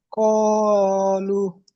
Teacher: জি, ও এর ডান দিকে পেশ হচ্ছে ও ওয়াও মাদ্দা, সাকিনের ডান দিকে, ওয়াও সাকিনের ডান দিকে, ও ও মাদ্দাকে, সাকিনের ডান দিকে পেশ হচ্ছে ও মাদ্দাকে এক আলিফ পরিমাণ টান দিয়ে পড়তে হয়।